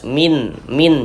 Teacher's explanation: Karena dia izhar ya dibaca jelas tidak berdengung. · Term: izhar halqi